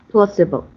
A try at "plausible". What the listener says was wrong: Okay, put the Z on the S.